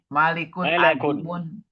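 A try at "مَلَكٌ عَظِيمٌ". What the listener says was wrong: Bukan malik, malaikat ya. Malakun.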